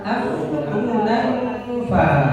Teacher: Nah, di situ af urunan fa. Nggih, karena letaknya dengungnya ada di bibir, ada di fa